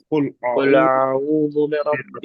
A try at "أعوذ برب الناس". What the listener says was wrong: ہاں، را کو برب نے را کو موٹا پڑھنا ہے نا، قل اعوذ برب الناس،